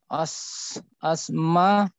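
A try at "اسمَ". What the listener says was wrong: bukan asma tapi isma.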